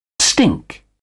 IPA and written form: stɪŋk (stink)